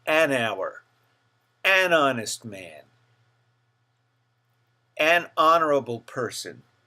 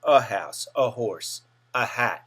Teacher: you have that breathy H sound at the beginning of the word · We use an when a word begins with a silent H. It's almost as though the H were not there.